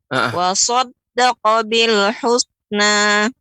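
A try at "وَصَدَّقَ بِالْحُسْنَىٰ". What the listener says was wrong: Ya, sinnya lebih ditampakkan. Tipis, jangan sampai. Nah, ini kalau yang ini sin. Tidak boleh husna. Kalau jadi mirip tebal. Caranya dibuka.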